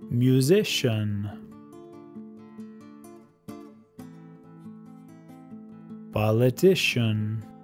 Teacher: con estas palabras Es la penúltima sílaba que viene acentuada